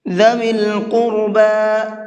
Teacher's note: قاف کو بھی اور را کو بھی دونوں کو پر کر کے پڑھیں گے